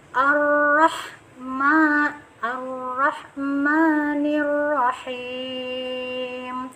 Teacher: tafkhim Tebal lagi ya cirinya tebal itu pangkal lidah bagian dalam sudah naik terangkat